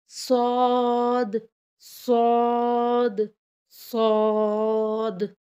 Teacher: सौद थोड़ा मोटी आवाज़ में अदा होता है